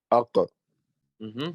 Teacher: So because we're talking about the topic of the sound elevating to the roof of the mouth, and then there's a creation of a sort of echo, which brings about a fattening sound, we have to talk about the fattening letters, right?